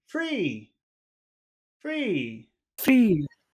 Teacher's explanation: we should probably use a high tone when uh we say the word free free free free yeah so not not serious free but happy